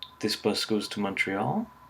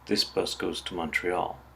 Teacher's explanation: We use rising intonation to turn a statement into a question